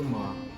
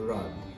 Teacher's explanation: the pronunciation of the vowel in words like my and dried as a long ah, which turns my into ma and dried into rod.